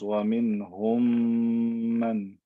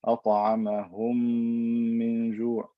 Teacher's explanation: And the word saghir refers to the fact that the first letter already has sukoon, so little work has to be done when I'm merging them together. I put them together, then I elongate the M sound with ghunna. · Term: idgham صغير